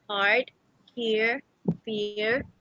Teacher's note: General American has a rhotic accent. · The rhotic accent is produced by a retroflex approximant.